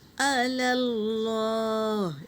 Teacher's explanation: اللہ کے نام سے پہلے زبر ہے تو ہم اسے پر پڑھیں گے